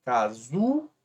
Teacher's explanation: oxítonas seria a palavra casulo termina em o e o e a sílaba paroxítona é a mais forte né a penúltima